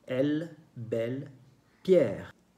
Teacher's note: También se escucha un sonido que es abierto, pero no hay acento en la E.